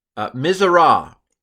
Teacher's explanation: nun assimilates when no vowel separates, so the nun has been sucked into the tzade, and the tzade is doubled. That's the nun right there. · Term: doubling